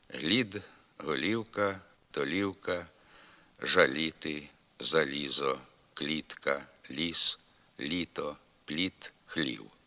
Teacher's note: перед голосним і звук л вимовляється м'яко